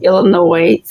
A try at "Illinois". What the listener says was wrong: Illinois with no S.